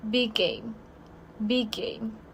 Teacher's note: and game start with a consonant sound too how you do you should cut one G and it's be like b game B game and I have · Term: consonant to consonant